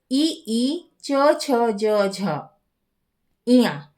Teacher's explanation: और य और श एशाम वर्ण नाम उच्चारणम तालु स्थाने भवती। इन वर्णों का उच्चारण तालु स्थान से होता है।